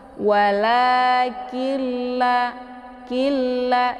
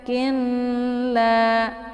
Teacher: Cara bacanya itu yaitu dimasukkan nunnya ke dalam bunyi lam ya, karena nun sukun bertemu dengan lam yang bertasydid dinamakan dengan idgham bila gunnah. Jadi memasukkan nunnya dengan tanpa berdengung. Cara bacanya cukup ditekan saja langsung masuk ke la.